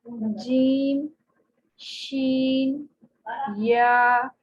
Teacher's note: जीम में बिल्कुल साथ टच होता है और शीन में कम होता है, और या में उससे थोड़ा कम टच होता है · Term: वस्त लिसान